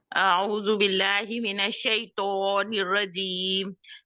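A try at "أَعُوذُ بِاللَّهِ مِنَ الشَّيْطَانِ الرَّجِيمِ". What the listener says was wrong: अच्छा, आपको क्या हुआ कि तौ के लिए आपने थोड़ा-सा लगता है जैसे ना उसको खुद मोटा करने की कोशिश की है। तौ तौ क्योंकि आपके होंठ गोल हुए हैं, आपने मुँह गोल किया है।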